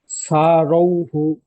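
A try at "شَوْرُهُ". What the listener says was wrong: এই শিন অক্ষরটি সিনের মতো উচ্চারণ হয়ে যাচ্ছে। সারৌ হু, সারৌ হু।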